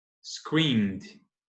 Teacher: Pulei do M para o D.